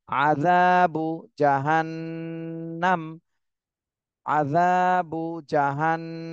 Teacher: জালে এক আলিফ টান দিতে হবে